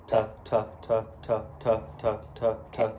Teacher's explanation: So for puh, it is the labial muscle, so your lips, and then the tuh is the anterior of the tongue, so the tongue tip is going up for that T sound